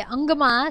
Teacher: અંગમાં શિરોબિંદુ એ જે છે એ કંઠ્ય અનુનાસિક સ્પર્શ વ્યંજન છે